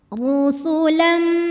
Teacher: huruf ro dibunyikan secara tafkhim karena ro berbaris damah cara bacanya ditebalkan